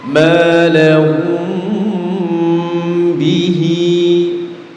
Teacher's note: Ya, mim sukun bertemu dengan huruf ba, namanya ikhfa syafawi. Cara membacanya adalah menggunnahkan huruf mim dengan tempo yang dipanjangkan. Ya. Jadi di sini ada gunnahnya sama ada samarnya.